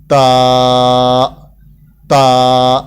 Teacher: تا ادا کرتے وقت منہ کو گول نہیں کریں گے, ہونٹ کو گول نہیں کریں گے, اس لیے کہ جہاں آپ مس کریں گے گول کرنے میں تو پھر ایسی صورت میں تا نہیں رہے گا, تا کے اندر تا کی بو آ جائے گی, اس لیے اس کا خیال رہے.